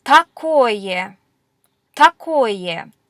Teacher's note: The stress is on the O in такое, and that's why it gets pronounced actually as an O.